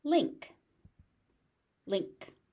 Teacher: So you can hear that final K is only partially aspirated, so it's just a link, not a link.